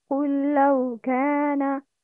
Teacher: قل لو this is إدغام مثلاً صغير in which silent lam should be merged in متحرك lam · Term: idgham